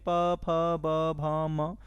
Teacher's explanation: पवर्ग जो है ओष्ठ से उच्चरित किए जाते हैं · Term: ओष्ठ व्यंजन